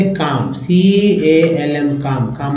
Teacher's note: LM में जो है L साइलेंट है, M का उच्चारण हो रहा है, M को म पढ़ेंगे।